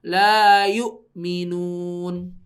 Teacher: la yu'minunnya pakai hamzah ya, bukan pakai ain